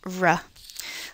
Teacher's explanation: The last one, r, is a little harder to feel that it's at the alveolar ridge since the tongue is not blocking off all airflow at this region. Rather, the tongue approaches the alveolar region and gets very, very close to it while still allowing air to pass over the central part of the tongue